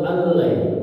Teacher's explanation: nun sukun itu menjadi lam ya, melebur ke lam jadi allai. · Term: Idgham bila gunnah